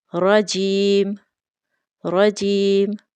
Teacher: را کے اوپر تشدید ہے تو را کو ہم شدت کے ساتھ پڑھیں گے، اور را کے اوپر زبر ہونے کی وجہ سے را کو موٹا پڑھیں گے